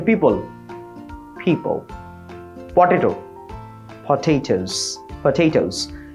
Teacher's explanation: খুব ইজি, মানে বাংলাতে যেমন ফ আছে, হ্যাঁ, ওই ফটাকে একটু মাইল্ডলি, পুরো ফ না বলে ফ, দুই ঠোঁট মিশিয়ে ফ বলেন